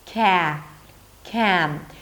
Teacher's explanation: Because there is an 'm' sound right after, the 'a' sound is a little milder, it's a little stretched